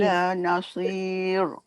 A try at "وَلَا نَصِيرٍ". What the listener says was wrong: Kalau nasir, dia tak takrir tu. Bergetar. latihan tu supaya kita dapat menyebut ra tu dengan takrir, tapi nanti bila sebut ra tu tak perlu banyak pun. Tapi latihan tu kena ada lah.